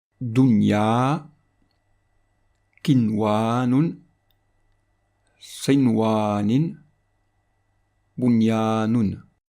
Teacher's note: le noun avec soukoun sera prononcé bref et clair